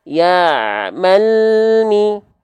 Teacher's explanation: Berarti huruf lam sukunnya kita lafalkan tanpa memantul tanpa terputus suara dilafalkan dengan tawasut sedikit mengalir suaranya antara bunyi Al ke huruf mimnya